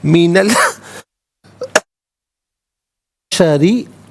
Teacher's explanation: ترین من البشری، ملا کر پڑھنے کی صورت میں نون پر زبر ہوگا، اس سے البشری کے لام ساکن کے ساتھ ملائیں گے، درمیان میں سے الف یعنی حمزہ کو حذف کریں گے. من البشری، را کے نیچے زیر ہے، را کو باریک کر کے پڑھیں گے